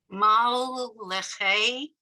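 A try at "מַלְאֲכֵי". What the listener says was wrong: don't forget the aleph there. So under the aleph is a straight line.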